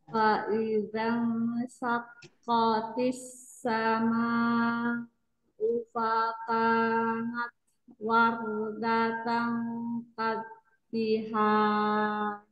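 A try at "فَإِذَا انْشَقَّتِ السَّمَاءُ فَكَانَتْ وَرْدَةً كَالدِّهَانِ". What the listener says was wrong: Tinggal fa-nya tadi keseret. Fakanat wardat. Ya, fakanat.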